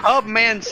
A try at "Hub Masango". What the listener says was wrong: It's Hub Masango. The N is silent.